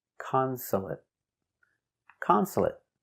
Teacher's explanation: consolate three syllables the stress is on the first syllable consolate consolate also finish with a stop T